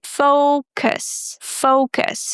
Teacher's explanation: We start with O, fo as in go, and then we pronounce cus. Very neutral uh sound. It's again the shwa sound.